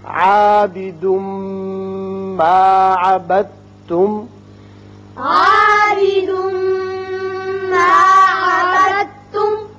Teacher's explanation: عبدتم دال ساکن ہے، با جو ہے یہ تا کے ساتھ مشدد جو ہے اس کے ساتھ ملے گی، دال نہیں پڑا جائے گا، با تا سے ملے گا۔ · تنوین کے بعد میم آ رہا ہے، اس لیے یہاں ادغام بغنہ ہوگا